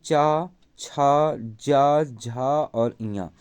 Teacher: ये आपका च वर्ग का उच्चारण स्थान तालव्य से है।